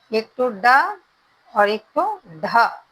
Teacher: द्विगुज व्यंजन जो है ताड़न जात ध्वनियों के नाम से जाने जाते हैं